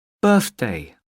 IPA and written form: ˈbɜː(r)θdeɪ (birthday)